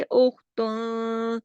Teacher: خا کو جماؤ کے ساتھ خراش کے ساتھ موٹا کر کے